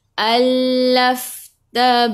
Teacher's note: Allafta, masuk ke dalam fa, fa ada sukun. Fa pun sifat hurufnya hamas, kena ada angin.